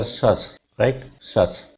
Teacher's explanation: जितने भी CIOUS है इन्हें शस बोलते हैं, शियस नहीं है, सीयस नहीं है